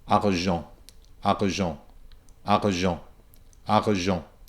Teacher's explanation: Or I can go back to what I think of as the classic French R, where we have this kind of a breathing, stopping sound right in the middle of the word.